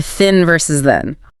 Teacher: tongue tip between the teeth for both. Add the voice for the second one.